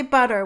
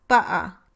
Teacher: in American English, you can say butter with a flap instead of the T, but not with a glottal stop, like this, butter, even though it's fine to use the glottal stop to replace T in some other contexts in American English.